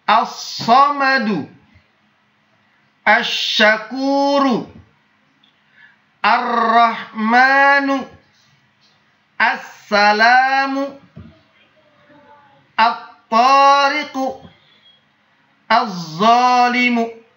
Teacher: Yang ketiga, yang dibaca adalah huruf yang bertasydid, huruf setelah huruf lam tersebut. Jadi, walaupun ada huruf lam, tapi huruf lamnya tidak terbaca, dianggap tidak ada. Tapi yang terdengar adalah huruf setelah huruf lam tersebut. Contoh, as-samadu, asy-syakuru, ar-rahmanu, as-salamu, at-tariqu, az-zalimu. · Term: alif lam asy-syamsiyah